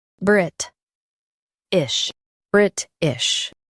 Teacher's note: Emphasize Brit and soften ish.